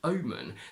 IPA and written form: 'əʊmən (OMEN)